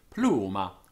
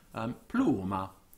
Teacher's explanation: And the curcum flexa, or inflexa, as Cicero calls it, the voice would first rise and then fall on the same syllable